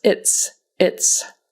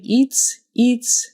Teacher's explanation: it might sound like a long e sound instead of a short i sound.